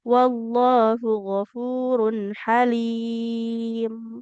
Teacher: halim ini lam ini boleh dibaca 2, 4 atau 6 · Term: mat aridlis sukun